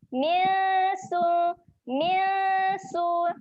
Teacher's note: Waktu kita dengung, lidah kita letak je kat bawah sebab makhraj huruf sin, hujung lidah sentuh belakang gigi bawah kan. Jadi letak je lidah kat bawah.